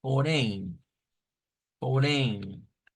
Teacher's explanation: Esa nasalización, ¿verdad? Es necesario hacerla ahí al final de estas vocales.